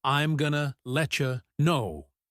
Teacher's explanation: let you becomes letcha